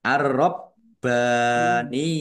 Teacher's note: jelas, hak fathah berdiri mat tabi'i panjang 2 harokat, arrob baniyuna alif lam samsiah karena tidak dibaca langsung masuk ke huruf berikutnya yaitu ro , ditandai roknya ada tasdidnya, roknya dibaca double, kemudian baknya juga